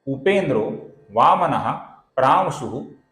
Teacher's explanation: विसर्ग के आगे जब प आता है तो हल्का सा फ उच्चारण हम करते हैं